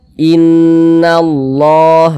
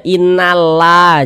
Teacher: Ini baris satu ke atas tanda baca fathah. Ada lafaz Allah, sebelumnya ada tanda baca fathah. Maka lafaz Allah kita baca tebal, kita baca tabkhim. Sehingga ini kita baca Innallah begitu.